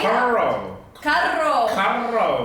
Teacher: It would be carro, has double R. So you have to roll your R's.